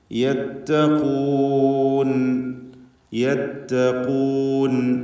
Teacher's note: ഇതിൽ ഖാഫിന് മാത്രമാണ് നിസ്ബിയായ തഫ്ഖീം നൽകേണ്ടത്, അപേക്ഷികമായ തഫ്ഖീം നൽകേണ്ടത്.